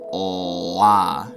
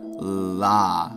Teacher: This one is the regular L sound, like in lady, la, or this slightly different dark L sound, which has a bigger pocket in the back of the mouth, so it's velarized